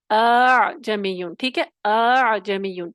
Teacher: جو دوسرا حمزہ تسہیل کے ساتھ ہوگا وہ پیچھے سے اقصی حلق کے مخرج سے تھوڑا سا آگے آ کے ادا کریں، تو کیا ہوگا، وہ آسانی ہو جائے گی اس میں آپ کو. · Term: تسہیل وجوبی